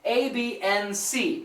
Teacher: when we say and, usually the D is eliminated. It's canceled.